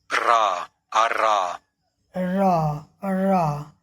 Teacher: Voiced dental या alveolar ट्रिल के नाम से भी जानते हैं।